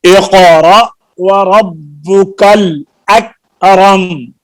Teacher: اقرأ میں قاف میں آواز فل ساؤنڈ ہے، موٹی آواز ہے اور یہ قلقلہ بھی ہے. اور اکرم میں قلقلہ نہیں ہے، آواز بند ہو جاتی ہے چھوٹے کاف میں